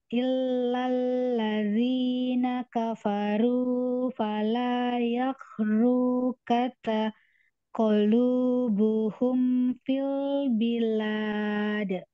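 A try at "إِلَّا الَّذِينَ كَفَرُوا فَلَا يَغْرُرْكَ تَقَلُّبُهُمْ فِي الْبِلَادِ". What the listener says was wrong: Agak putus ya. Sampai taqallubuhum saja, lamnya ada syedidnya dimasukkan ya, Jadi double lam sukun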